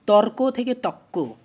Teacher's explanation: পরবর্তী ক এর প্রভাবে র টা ক তে পরিণত হয়ে গেছে অর্থাৎ পরবর্তী ব্যঞ্জনের প্রভাবে পূর্ববর্তী ব্যঞ্জনটা পরবর্তী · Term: পরাগত